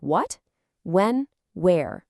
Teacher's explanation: And our last digraph for today is the windy WH. When you see W and H together, it makes this really breathy sound, kind of like you're blowing on some hot soup to cool it down.